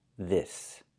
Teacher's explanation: And the s makes a real s sound with no vibration.